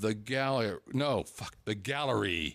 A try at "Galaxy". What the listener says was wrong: Galaxy. It's Galaxy. You still just said gallery.